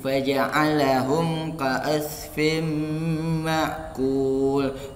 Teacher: Di sini fin ada huruf ma. Ada huruf ma ditambah dengan huruf ma, jadi fin tadi berubah menjadi fim. Itu namanya idgham biguna.